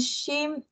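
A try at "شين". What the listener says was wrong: Tapi dia bukan shim tau, dia shin. S-H-I-N. Shin. S-H-I-N. Shin. Shin, bukan huruf shim.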